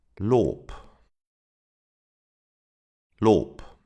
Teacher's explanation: The final B sounds like a P.